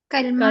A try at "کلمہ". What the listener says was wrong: یہ کلمہ نہیں ہے، کلیمہ ہے. کلیمہ کہا جاتا ہے.